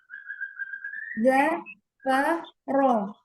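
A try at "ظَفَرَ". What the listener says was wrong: Fa-nya dijelaskan lagi huruf fa-nya.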